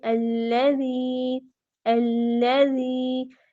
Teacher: لام کیا ہے، مشدد ہے، مضبوطی کے ساتھ ادائیگی ہوگی